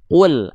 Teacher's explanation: Karena kalau bocor nafasnya seperti itu pada huruf qaf, sedangkan qaf sifatnya adalah jahr tertahan nafas